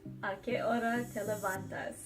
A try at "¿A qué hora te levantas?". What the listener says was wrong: It almost sounded a little like Italian. A little bit. ¿A qué hora te levantas? Yes, but you gotta make it like a question. So, ¿a qué hora te levantas?